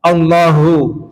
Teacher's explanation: Bukan di dada. Hu itu ada di pangkal tenggorokan bagian bawah. Allahu. Jangan Allahu hu hu bukan di dada ya. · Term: huruf H